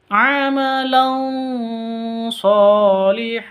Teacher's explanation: tanwin bertemu dengan Shad siap-siap ke shadnya atau samar disertai dengung